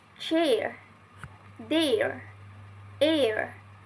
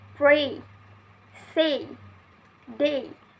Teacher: And also complex vowel sound, formed by the combination of two vowels in single syllable, in which the sound begins as one vowel and changes to another vowel sounds in the same syllable